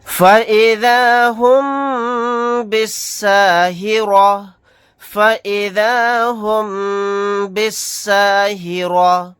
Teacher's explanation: یہاں پر میم ساکن کے بعد با آ گیا تو یہاں پر ہم غنہ کر کے پڑھیں گے